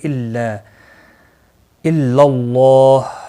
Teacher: اللہ کا لام زبر کی وجہ سے پر پڑھا جائے گا، اس کے اوپر کھڑی زبر بھی ہے، ایک الف کے برابر کھینچ کر پڑھیں گے۔